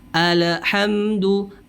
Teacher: Nah ini juga kekeliruan, kesalahan yang terjadi. Dia mengkolkolahkan huruf lamnya atau memantulkan huruf lam atau bunyi lamnya.